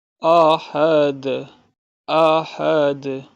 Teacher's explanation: احد دال پہ قلقلہ کریں گے